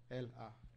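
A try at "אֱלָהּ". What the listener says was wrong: That wouldn't be Ah, it would be Ah. Yeah, you got to have the hard guttural. Ah.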